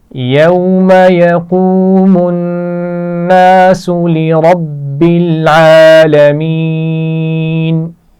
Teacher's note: یقوم الناس نون پر غنہ ہے. لربی را موٹا پڑھا جائے گا